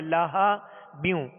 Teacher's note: ہا کو وسط حلق سے ابتدائی حلق سے ادا کریں گے. ہا ہا نہ ہو لاہا نہیں پڑھیں گے بلکہ لاہا بیوں.